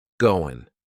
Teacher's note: That final G in the word going is going to be cut off, and we'll just say, goin'.